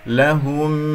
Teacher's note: ولكن شو، ولكن شبه لهم، با شديدة مجهورة من صفاتها وهي مكسورة، فانتبه، لهم، ها مضمومة نضم الشفتين، ميم مظهرة في الوقف والوصل، وخاصة جاء بعد حرف الواو، احذر أن تختفي، لهم و، تمام؟